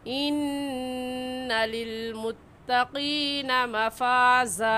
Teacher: इन्ना में नून मुशद्दद है और नून मुशद्दद पर हमेशा गुन्ना करते हैं, तो यहाँ पर हम गुन्ना करेंगे और गुन्ना एक अलिफ की मिक़दार नाक में आवाज़ छुपाने को गुन्ना कहते हैं।